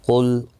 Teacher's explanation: قاف مستعلیہ ہے، پر پڑھا جائے گا، لام ساکن کو ہلانا نہیں